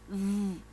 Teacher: Entonces pones tus dientes superiores sobre tu labio inferior y soplas.